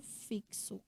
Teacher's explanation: o duplo som né KS ou CS que você vê por exemplo em palavras como fixo